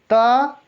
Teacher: देखिए जो हमारी जिह्वा है वो दांतों को क्या करते हैं? टच करते हैं। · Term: त वर्ग